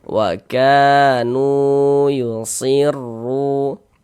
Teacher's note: Sehingganya nu kita baca panjang. Mad tabi'i panjangnya 2 harokat.